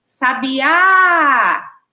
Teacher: rapidinho a gente já consegue identificar que a sílaba tônica é o A